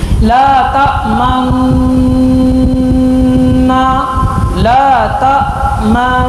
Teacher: پڑھنے کے بعد نون کے مخرج میں ہماری زبان لگی تو نون کا غنہ ایک الف کے بقدر ہماری خیشوم سے اس کی آواز آئے گی · جیسے ہی ہم نے میم پڑھا، میم کے بعد ہم نون میں ہماری زبان کی نوک لگی، فوراً ہی ہونٹ گول ہو گئے اور اشمام ادا ہوگا اور پڑھا جائے گا لا تأمنا۔ ایک طریقہ اس کو پڑھنے